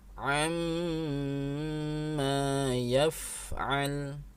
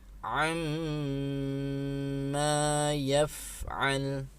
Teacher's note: harus dibaca dengan gunnah, suara dari hidung, dengung, kemudian ditahan suaranya, tidak tergesa-gesa, ditahan 3 harokat ya. Contohnya amma yaf'al ya, tahan amma ya, tidak sekedar dibaca amma, tapi ditahan dulu 3 harokat.